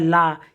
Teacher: आगे बात करेंगे पार्श्विक व्यंजन जिन ध्वनियों के उच्चारण में जिह्वा का अग्रभाग वर्तस्य को स्पर्श करती है, श्वास जिह्वा के दोनों पार्श्वों से निकलती है, उन्हें पार्श्विक व्यंजन कहा जाता है।